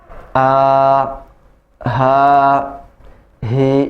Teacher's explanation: Kalau ha besar, makhrajnya di pangkal tenggorokan bersamaan dengan huruf a. Ha, hi. Jadi lepas.